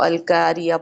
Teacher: قاف تو موٹا پڑھ رہے ہیں لیکن الف کو ہم نے باریک کر دیا. اور اسی طرح سے بہت مائنر مسٹیکس کرنا کہ قاف موٹا ہے، پڑھا تو ہم نے موٹا ہے لیکن اس کو بہت ہلکا سا ہم نے باریک کر دیا ہے.